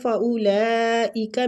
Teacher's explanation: فَأُولَئِكَ میں جو مد ہو رہی ہے یہ مد واجب متصل ہو رہی ہے، اس کو کھینچنے کی مقدار 4 حرکات ہے